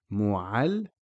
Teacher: You notice the lam being pronounced twice. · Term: shadda